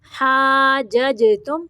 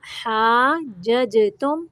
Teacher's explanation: جیم کو قلقلہ کرنا ہے